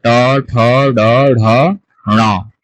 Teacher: আমাদের মূর্ধন্য। মূর্ধন্য মানে আমাদের তালুর মাঝখানে ঠিক উচ্চারিত হবে, জিহ্বা তালুর মাঝখানে গিয়ে লাগবে